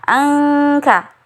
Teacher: e huruf nun sukun yang bertemu dengan huruf Kaf angka jadi bunyinya seperti ada huruf ng-nya karena memang makhraj huruf k di situ